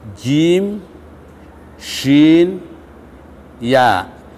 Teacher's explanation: Jika tengah lidah ketemu dengan langit-langit tengah lidah, maka akan keluar huruf jim, shin, ya.